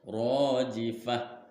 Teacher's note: ada alif didahului oleh fathah, maksudnya panjangnya dua harokat, yaitu satu alif atau dua harokat. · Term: mad tabi'i